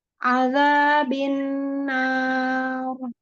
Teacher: Naknya tipis, rohnya tebal sayang.